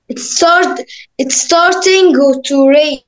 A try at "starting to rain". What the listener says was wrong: ما ننطقش الجي. Starting to rain.